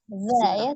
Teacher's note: Zalnya ujung lidahnya ada di ujung gigi seri atas. Za ya, tidak tertukar dengan zai.